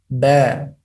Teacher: huruf ba dengan cara dengan dua mulut, dengan dua bibir.